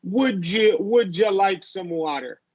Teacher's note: you're going to change the U into a j the d y becomes a j